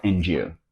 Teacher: when we have a word that ends in a D sound and the next word begins with the letter y d turns into a j sound